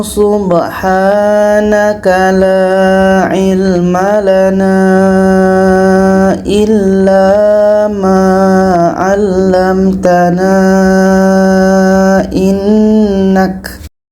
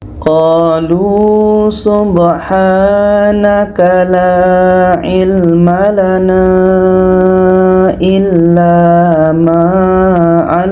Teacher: Ketika sambung wasal panjang empat hingga lima harakat. Ketika berhenti panjang dua harakat saja.